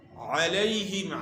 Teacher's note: علیہم، عین کی آواز اس کا مخرج جو ہے عین کا گلے کا درمیان ہے، وسط حلق ہے، گلے کا درمیان۔ اور علیہم یہاں یا لین ہے، یا ساکن سے پہلے زبر ہے، اس کو نرمی کے ساتھ آپ نے ادا کرنا ہے۔